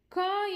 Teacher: நாக்கின் முதற்பகுதி மேல் அன்னத்தில் ஒட்டும் பொழுது க என்னும் எழுத்து பிறக்கின்றது